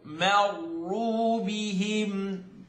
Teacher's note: This meme is light and the ra is heavy.